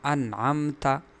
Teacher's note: تیسری حالت اظہار کی ہے، تو اظہار کا مطلب یہ ہے کہ میم ساکن کے بعد اگر میم اور با کے علاوہ حروف تہجی میں سے کوئی اور حرف آئے تو ایسی صورت میں اس میم میں اظہار ہوگا، یعنی اس میں غنہ وغیرہ نہیں ہوگا، خیشوم تک آواز نہیں چلی جائے گی، بالکل ظاہر کر کے اس میم کو پڑھی جائے گی۔